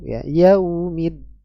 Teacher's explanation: dia jahar ya nafasnya tertahan dalam jumlah yang besar